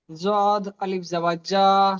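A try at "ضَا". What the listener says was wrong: অক্ষরটা দেখেন, সদ আলিফ জাবার স। এটা জদ নয়, এটা দদ। দদ নয়, দদ আলিফ জাবার দ। দদ হচ্ছে, দদ হবে না, দ।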